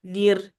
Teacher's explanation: noon kasra joins the ra. Nir. So it becomes light.